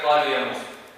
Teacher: the lengthening is 2 vowel counts. This is the regular number, 2. qa, lu, ya, mu, sa, 2. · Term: mad tabi'i